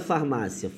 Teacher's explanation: esse ia aqui de farmácia repara que ele é um I fraco Ele é o que a gente chama na Gramacho de semivogal